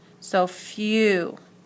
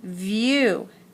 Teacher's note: That's why it looks like consonant vowel vowel, because the W acts like a vowel, so on the end you hear the ooh